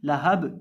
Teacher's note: ये बा भी हरूफ़े कलकला में से है, इसको भी हम हिलाकर पढ़ेंगे